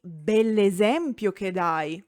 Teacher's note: I'm using the elided form of bello because only the final O is suppressed.